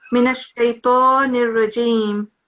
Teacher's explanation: We haven't got a nasal sound here, so it will be Min ash-shaytan ar-rajim.